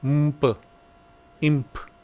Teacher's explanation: or n Sound before P imp you can't do in P you can't do an n followed by P you have to put an M before